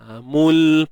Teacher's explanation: Hujung lidah tu pastikan berada di lelangit dalam keadaan yang agak bertempo lah, lama sikit. Jangan lepaskan. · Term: makhraj lam